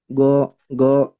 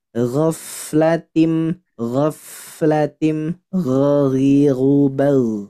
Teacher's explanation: Sebelum huruf fa-nya kita perhatikan Bapak Ibu sekalian, ada huruf ghain. Dia letaknya di adnal halqi atau tenggorokan bagian ujung dekat dengan lidah. Harus tebal.